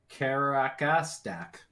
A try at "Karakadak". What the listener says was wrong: There's no S in there.